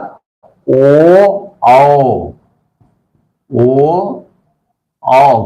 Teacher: ओ औ कंठ तो है ही, और अगर आप ओठ का आकार नहीं करेंगे तो ये ओ और औ का उच्चारण नहीं होगा। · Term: कंठ और ओष्ठ